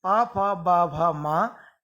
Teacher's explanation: उ, ऊ, पा, फा, बा, भा, मा, इन वर्णों का उच्चारण स्थान, इन वर्णों का उच्चारण स्थान है ओष्ठ, इसलिए ये कहलाएंगे ओष्ठ वर्ण।